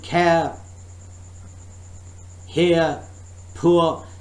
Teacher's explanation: when I'm saying care, here, poor, so I am dropping R sound